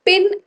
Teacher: जब आप पिन बोल रहे हो तो पिन एस्पिरेटेड है। मतलब पिन। आपको लगेगा कि अच्छा सांस एक पफ ऑफ एयर आ रहा है।